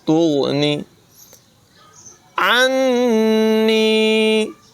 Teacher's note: نون مشدد میں غنہ ہے، یا مدہ کی وجہ سے نون کو لمبا کر کے پڑھیں گے